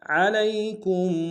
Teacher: کاف کو میم ساکن کے سامنے لانا ہے، میم ساکن میں غنہ کریں گے